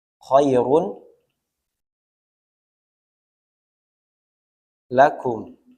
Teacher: dari tanwin Khairun lakum maka tanwin ini datain bertemu dengan lam dileburkan ke huruf lam tanpa gunah tidak boleh khairullakum ditekan terlalu lama dia cukup dimasukkan saja tanpa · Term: Bila Ghunnah